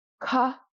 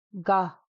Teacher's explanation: So we went from ka to ga. We've completely softened that aspiration.